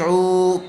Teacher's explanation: رب بر جی، جیم زیر جی، عین واو پیش عو، پیش والے حرف کے بعد واو ساکن آیا ہوا ہے، اس لیے واو مدہ ہوگا اور اس کو تھوڑا کھینچ کر پڑھیں گے